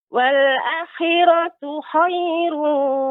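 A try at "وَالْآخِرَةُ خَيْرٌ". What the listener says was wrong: A-nya. A-nya dibaca 2 harokat. mad tabi'i. Wal akhiratu khairu wa abqa.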